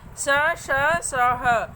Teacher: ऊष्म व्यंजनों के उच्चारण करने पर श्वास रगड़ खाकर मुंह से बाहर आती है, जिससे ऊष्मा अर्थात गर्मी पैदा होती है, इसीलिए इन वर्णों को ऊष्म कहा जाता है।